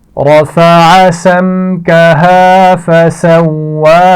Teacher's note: رفع را کو موٹا پڑا جائے گا، عین کے مخرج کا خیال رکھیے. سمکہا میم ساکن کے بعد میم بھی نہیں ہے، حرف با بھی نہیں ہے تو یہاں پر غنہ نہیں کیا جائے گا. فسواها واو کے مخرج کا خیال رکھنا ہے.